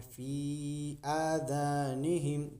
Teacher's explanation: फी के ऊपर मद है, थोड़ा सा लंबा करके पढ़िएगा। उसके बाद हमजा के ऊपर खड़ा जबर है, ये भी थोड़ा सा लंबा होगा।